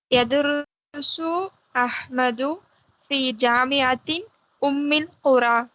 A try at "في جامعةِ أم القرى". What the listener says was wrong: ஜாமிஅத்தின்னு சொல்றீங்களா தில்லன்னு சொல்றீங்களா? ஏன் தின்னு சொல்றீங்க? நீங்க அப்படி தின்னு சொன்னா என்ன அர்த்தமாகும் தெரியுமா? ரெண்டு பேரும் அப்படிதான் சொல்லியிருக்கிறீங்க.